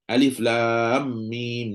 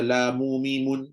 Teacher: Memang lam dan mim tu mati ujungnya. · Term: sukunnya asli